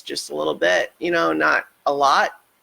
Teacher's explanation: the vocal fry sort of thing where I'm talking like this just a little bit